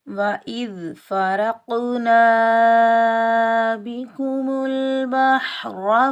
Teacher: रा और क़ाफ़ ये दोनों हरूफ मुस्तअला में से हैं तो इनको मोटा पढ़ेंगे